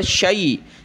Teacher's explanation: اس کو آپ نے شین یا زبر شے نہیں پڑھنا، یہ مجہول کہلاتا ہے